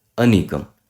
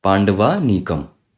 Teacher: Either of the a, when combines with either of the a, the result is always dIrgha a or the long a. dIrgha simply means long in Sanskrit, and that is what is happening here. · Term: dIrgha sandhi